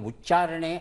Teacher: ಉಚ್ಚಾರಣೆ ಅಂದಾಗ ಅದು ಅಲ್ಪಪ್ರಾಣವೇ ಆಗಿರುತ್ತೆ ಮಹಾಪ್ರಾಣ ಆಗಲ್ಲ